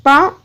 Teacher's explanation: पा ओष्ठ है और अल्प प्राण है